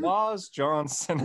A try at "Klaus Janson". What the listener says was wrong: Klaus Janson. It's an A. Janson. Yeah, Klaus Janson. You really thought it was Janson? Klaus Janson.